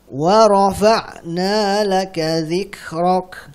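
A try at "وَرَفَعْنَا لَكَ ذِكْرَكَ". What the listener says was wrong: Ulangi lagi. Wa rafa'. Ainnya hadirkan dikit.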